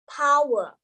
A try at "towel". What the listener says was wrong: No. You're saying it in 2 syllables. You're saying towel. It's just towel. Okay, you have to pronounce.